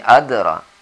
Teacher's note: Delnya ini adalah qalqalah shaghir, qalqalah yang ringan.